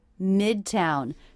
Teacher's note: stress on the first syllable here and that is a true T